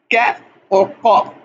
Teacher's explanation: حروف الجزء الرخو من سقف الفم، تالوں کے نرم یعنی تالوں کے نرم حصے والے حروف، ک اور ق، یعنی یہ سختی سے ادا نہیں ہوتے ہیں۔